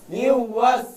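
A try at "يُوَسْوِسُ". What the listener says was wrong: ঠোঁট গোল না করলে ওয়াও আদায় হবে না, ওয়ার উচ্চারণটা আদায় হবে না।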